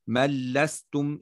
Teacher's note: لؤلؤا منثورا، إدغام بغنة وهو إدغام كامل على قول الجمهور. من لستم، إدغام بدون غنة وطبعا هو إدغام كامل بلا خلاف